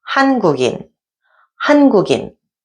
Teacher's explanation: All three syllables have 받침, but 국 is followed by a vowel initial in, and this is where we can link these two sounds. We take the 기역 sound from the 받침 and pretend it's in the following ing position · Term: liaison rule